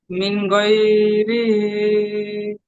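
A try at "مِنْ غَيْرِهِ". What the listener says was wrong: এখানে দেখেন, গই আপনার টান হয়ে যাচ্ছে। গইন ইয়া জাবার গই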